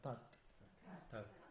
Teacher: And remember, you're touching the top, tip of your tongue at the beginning end